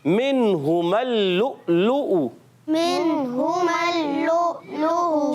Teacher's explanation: یہ الف نہیں پڑھیں گے، اور میم کی زبر کو لام سے ملائیں گے اور پڑھیں گے منہم اللؤلؤ